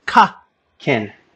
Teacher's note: the word kin, K-I-N, meaning a relative, would be aspirated